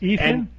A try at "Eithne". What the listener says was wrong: Enya. No, Enya. Apparently the TH is silent in Irish.